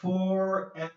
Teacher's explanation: you have the F and the V okay forever okay so F and V are the same but the V is shaking